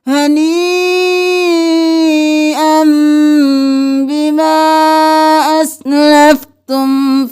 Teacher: یا مد نی 5 الف کے برابر نی کو کھینچتے ہوئے حمزہ کو میم کے ساتھ ملانا ہے